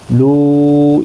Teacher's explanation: مد منفصل ہے، تین الف کی مقدار کے برابر کھینچ کر پڑھیں گے